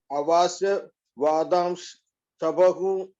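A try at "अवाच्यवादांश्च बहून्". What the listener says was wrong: ச பஹூன். ச வந்து தனியா சொல்லணும். ஏன்னா சனா என்ன and.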